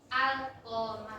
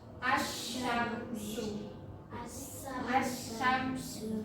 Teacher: Kalau idhar komariah itu alif lamnya itu dibaca jelas.